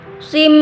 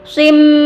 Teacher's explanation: Sim, baris 2 berjumpa dengan mim, idgham bi gunnah. Kemudian terdapat tasydid pada mim, itu tanda wajib gunnah, maka terdapat wajib berdengung di situ